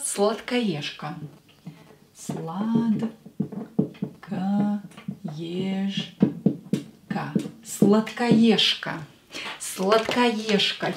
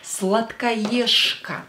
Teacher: Here this же will be pronounced as ша. Because voiced consonant located near unvoiced consonant will become unvoiced too.